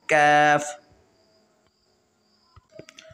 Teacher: کیف زبان کی جڑ اور تالو کے سخت حصے سے ادا ہوتا ہے